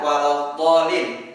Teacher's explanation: kita memperpanjang kata addolin sebanyak enam harakat, karena ada tanda alif panjang yang bertemu dengan huruf dengan shaddah, ya, huruf dengan shaddah, lam dengan shaddah, jadi kita menggunakan, ya, panjang napas kita selama enam harakat.